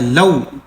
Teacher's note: یہ واو ہے، یہ لین کا ہے، لو، اس کو نہیں کھینچیں گے۔